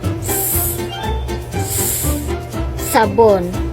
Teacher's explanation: Ito ay ang hanging lumalabas ay nagdaraan sa makipot na pagitan ng dila at nangala-ngala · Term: pasutsot